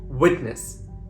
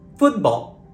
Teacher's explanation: The glottal stop is used when the syllable ends in T and is followed by a consonant sound.